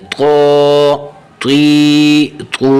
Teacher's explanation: تو منہ کو تھوڑا سا گول کر کے تو تا کی آواز سے بچا کے تو کی اپنی آواز نکالنی ہے